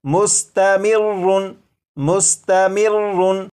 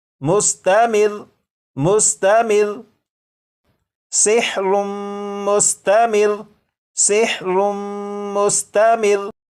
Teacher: रा के ऊपर जो तशदीद है इसे तो पढ़ेंगे, लेकिन रा के ऊपर जो 2 पेश हैं इन्हें ख़त्म कर देंगे। और ये जो लफ्ज़ है मुस्तमिर्रुन, वक्फ में ये पढ़ा जाएगा मुस्तमिर मुस्तमिर सिहरुम मुस्तमिर सिहरुम मुस्तमिर।